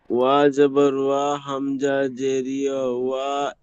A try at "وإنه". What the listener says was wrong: হামজা নুন জের ইন ওয়া না হয়ে যাবে। এখানে বানান করছেন একই আর উচ্চারণ করছে আরেক। তো কেটে কেটে বানান করেন, একটা একটা বানান করবেন, পিছনে পড়ার সাথে জুড়বেন। ওয়া যাবার ওয়া হয় না, ওয়া কোনো অক্ষর নেই। ওয়াও,